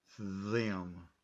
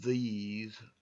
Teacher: you feel it down in your throat and the same way the next word these is also voiced and you can feel the sound down in your throat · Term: voice sound